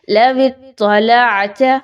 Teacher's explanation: تا موٹی، لام باریک پڑھی جائے گی